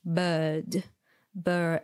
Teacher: your tongue is in the middle, even in the British variant